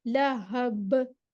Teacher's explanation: नारंग ज़ात लहब, ल लहब, हा सीने से जाके निकलेगा, लहब, बाउंसिंग साउंड, कलकला होगा